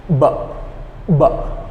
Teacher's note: you hum and quickly separate your lips. So in conclusion, what you have to do is just close your mouth and make sure that your top lip and your bottom lip tighten together, and then you hum.